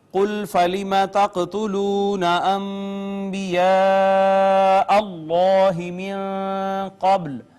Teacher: قاف ساکن آئی لہٰذا قاف حروف کلکلہ میں سے، اس پہ کلکلہ ، اور مد متصل، پھر ما قبل اس میں جلالت کا